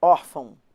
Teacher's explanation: Quando a gente vai da vogal para semivogal, a gente tem um ditongo que está caindo, vai do mais forte para o mais fraco. Então, ele é o ditongo decrescente.